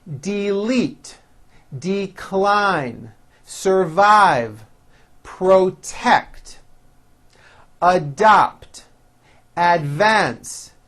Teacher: here are a few two-syllable words that are stressed on the second syllable